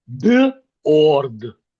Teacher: the average Ukrainian or Russian speaker would go b- o-r-d with the o sound because the sound uh simply uh doesn't exist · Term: the or sound